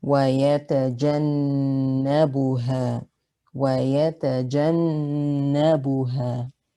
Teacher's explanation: Here we have nun with shadda in the middle of a word. It has a ghunna, so you hold the ghunna for 2 counts.